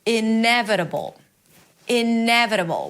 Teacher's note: Primary stress is on n.